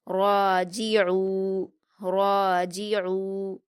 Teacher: عین پر واو مدہ ہے، 2 حرکات کھینچ کر پڑھیں گے اور حلق سے ادا کریں گے